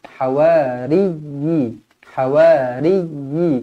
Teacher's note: ya yang bertanda sabdu jadi kena tekankan dia